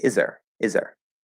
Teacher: we won't consciously hear that there's no th